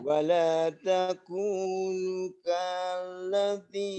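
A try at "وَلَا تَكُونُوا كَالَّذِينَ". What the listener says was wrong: Nu-nya panjang. Nu ya. Panjangkan. Wala takunu, panjangkan.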